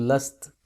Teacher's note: اب لمبی تا کو وقف میں ساکن تا پڑھتے ہیں جیسے لستا، تو اس کو ہم جب وقف کریں گے تو لست پڑھیں گے۔